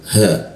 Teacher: huruf ha di tenggorokan bagian bawah dia